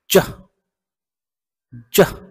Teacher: জিভের মাঝখানটা তালুর সাথে লাগায় একটু শক্ত করে উচ্চারণ করব আমরা